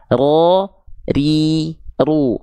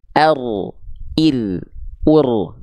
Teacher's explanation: Tidak hilang getarannya, hanya berkurang. Getarannya nggak terlampau banyak. Ya, karena dia punya sifat namanya takrir alias getaran yang sedikit saja, tetapi tetap tegas, lugas, dan jelas.